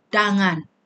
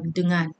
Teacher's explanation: vokal epepet digugurkan dan diganti vokal A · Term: Tiada bunyi vokal epepet